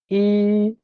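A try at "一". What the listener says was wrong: আপনি শুরুতে যেটা বলছেন সেটা হচ্ছে ই, এই ফলিং টোন। আপনি শুরুতে কি বলেছেন বলুন তো দেখি? Falling tone. হুম, ফলিং টোন হলে এটার মিনিং চেঞ্জ হয়ে যাবে, বাট এটা হচ্ছে কি ফ্ল্যাট টোন, ফার্স্ট টোন, প্রথম টোনটা আর কি। তাহলে এটা হবে কি ই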